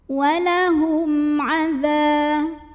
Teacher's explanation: cara baca mim sukunnya adalah dibunyikan dengan idhar atau jelas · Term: idhar syafawi